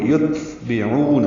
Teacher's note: یتبعون میں تا ساکن پہ ہمس ہوگا یعنی سانس جاری رہے گی · عین وسط حلق سے نکالیں گے, اور یہ واو مدہ ہے.